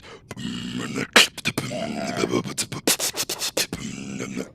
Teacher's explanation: there's the growl which is like very very much vocal-fried